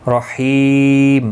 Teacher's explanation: حی یا مدہ ہے، ایک الف کی مقدار کے برابر کھینچ کر پڑھیں گے، اور وقف کی صورت میں میم ساکن پڑھا جائے گا، وقف بالاسکان ہوگا، مد العارض وقفی ہوگا، 3 سے 5 الف یا 3 سے 5 سیکنڈ کھینچ کر وقف کریں گے۔